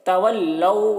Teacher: یہاں پر واو لین ہے، اسے نرم آواز کے ساتھ جلد پڑھنا ہے۔